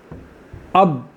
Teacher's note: क्या मतलब, आपको मालूम करना है बा कहाँ से निकलेगा, तो आप क्या करें, अब ठीक है, अब आपका आवाज़ कहाँ रुक रही है, दोनों होंठ बंद हो रहे हैं, यही बा का मखरज है